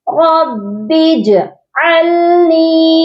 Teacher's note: جیم جو ہے وہ ساکن ہے، اس کے اوپر جعلنی زبر نہیں دینی، زبر کی حرکت نہیں ہے